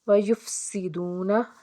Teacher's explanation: سین حرف صفیریہ کا حرف، سیٹی کی آواز آنی چاہیے